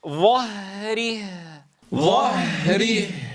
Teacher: أعطيها من زمن الرخاوة مماثلا بزمن متماثل في الهاءين